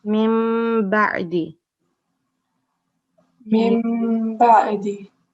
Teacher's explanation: So this is iklab rule. So we are going to turn noon sakin into meme, and we are going to do nasal sound here